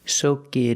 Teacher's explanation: we hear the T and it pronounced as a fast D